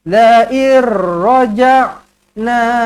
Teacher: Okey, idgham bila gunnah. Nun kosong bertemu dengan ra sabdu, idgham bila gunnah, masuk tanpa dengung, tidak perlu dengung.